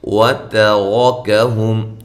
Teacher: تا باریک را موٹا، کاف باریک